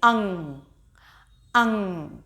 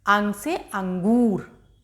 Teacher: अंगूर में आप देखेंगे ना बोलते समय हल्की सी आपकी नाक से आवाज निकलती है